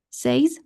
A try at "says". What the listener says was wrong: No. It's says without the Y. Forget about the Y.